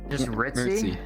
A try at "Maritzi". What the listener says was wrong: Maritzi with the M. See, Marit.